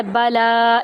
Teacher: لام کو ایک الف کے برابر لمبا کریں گے